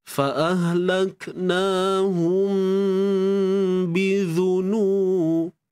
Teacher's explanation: Tutup bibir bersahaja, dengung pun perlu dikekalkan. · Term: ikhfa syafawi